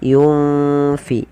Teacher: Karena di sini keba, maka samarkan nunnya kepada huruf fa. Yunfi. Seakan-akan kita langsung melafalkan huruf fa. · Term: ikhfa